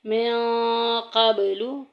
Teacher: من قبل میں دیکھیں آگے نون ساکن کے بعد جو ہے وہ قوف آ گیا ہے جو کہ حروف اخفا میں سے ہے، چھپا کے پڑھیں گے۔ من قبل، قب میں آواز گونج کے نکلے گی، حروف کلکلا میں سے آ گیا ہے۔